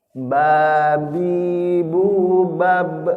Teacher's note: Hanya saja ba itu kadang-kadang keluar hawa Pak, padahal enggak. Babi bu bab itu enggak keluar hawa